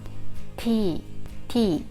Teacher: T is almost the same sound as the English T sound without much aspiration.